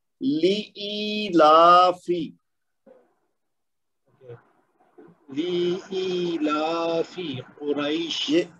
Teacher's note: یعنی پہلے والا لام بھی 1 حرکت ہے اور آخر والا فا بھی 1 حرکت ہے، لیکن بیچ میں دونوں 2 حرکت ہے. تو اس کو پڑھنا ہے لإیلافی.